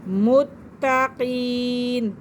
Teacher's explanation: تا جو ہے یہ بھی مشدد ہے اور مشدد حرف اپنے پہلے والے حرف کے ساتھ مل کر پڑھ جاتا ہے، تو لہٰذا میم کو تا کے ساتھ ملائیں گے، اور یا ساکن سے پہلے زیر ہے تو یہ مدہ کا قاعدہ ہے، یا مدہ ہو رہا ہے۔